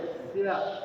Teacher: dia ada satu sifat namanya tafasyi, memancar.